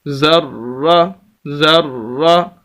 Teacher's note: را کے اوپر زبر، اس وجہ سے را کو موٹا پڑھیں گے، اور اس کے اوپر شد ہے، سخت کر کے بھی پڑھیں گے، آواز کو روک کر بھی پڑھیں گے۔